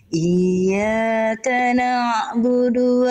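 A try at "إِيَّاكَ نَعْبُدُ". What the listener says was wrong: Naknya jangan diseret. Naknya langsung masuk ain. Jangan naknya jadi kepanjangan kayak diseret. Langsung. Na'budu.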